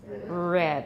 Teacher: the voiced alveolar approximant from American English